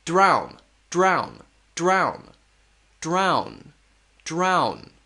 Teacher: it's a very quick R sound drown drown drown drown drown notice again my mouth is going from Big to small